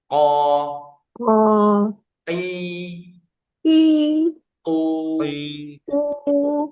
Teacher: sifatnya untuk qof yang pertama jahr. Qof itu enggak ada ee enggak ada angin · Kalau QF pangkal lidah naik, tapi kalau kaf nanti pangkal lidahnya turun. · untuk huruf yang qof dulu di bagian lidah paling dalam dan langit-langit mulut yang berdaging